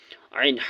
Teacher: عین، حا یہ درمیانی حلق سے نکلتے ہیں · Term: حروف حلقی